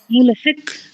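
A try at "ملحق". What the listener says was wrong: আপনার কাম মূলত হচ্ছে কাফের মাখরাজে ধাক্কা হয়ে যাচ্ছে। কফটা যে জিহ্বার গোড়ায়, সে জিহ্বার গোড়ায় যাচ্ছে না, কাফের জায়গা থেকে মুলহিক এখানে ধাক্কা হচ্ছে, কিন্তু হবে হচ্ছে মুলহিক। মুলহিক একদম জিহ্বার গোড়ায়।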